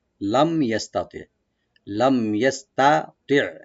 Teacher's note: এখানে তা এবং তোয়া দুইটা আছে, খেয়াল রাখবেন। প্রথম তাটা পাতলা করে পড়বো আমরা লাইট করে, আর দ্বিতীয় তোয়া যেটা একটু ডিপ করে মোটা করে পুরো করে পড়বো। আর আইনটাকে অবশ্যই রাইট দিব, মানে গলার মাঝখান থেকে যেন আসে।